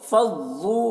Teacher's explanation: ضاد میں تشدید ہے، ضاد کو پر پڑھنا ہے اور سختی کے ساتھ ملا کر پڑھنا ہے کیونکہ تشدید ہے۔